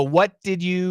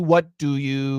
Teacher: the first one is gonna usually have a j pronunciation and the second one will not